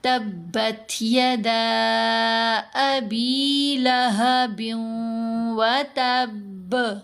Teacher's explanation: جو کلکلہ ہم نے کیا یہ کلکلہ اکبر ہے، سب سے مضبوط کلکلہ